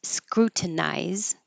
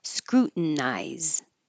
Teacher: You can say with the T, scrutinize, or without the T, scrutinize.